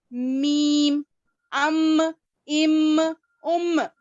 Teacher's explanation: अब होठ में जितने फर्क है क्या बोले तो फिर अलग अलग आवाज निकालना है ना अपने को, सेम एक जगह से तो नहीं निकाल सकते। इसीलिए बंद होठों के खुश्क हिस्से मिलने से मीम अदा होता है। · बगैर होठ मिलाए मीम बोल ही नहीं सकते हम